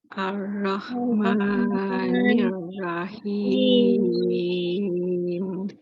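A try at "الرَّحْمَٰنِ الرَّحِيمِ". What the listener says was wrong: Okey, lagi sekali panjangnya kena cukup. Baca panjang lebih baik. Tapi 6 ni panjang sangat. Kita ambil yang tengah-tengah. Biasa saya ambil 4 je.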